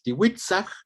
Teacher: Y para el plural tenemos nada más la glotal, ¿no? La diferencia sería con el singular, que aquí tenemos la glotal al final de la palabra.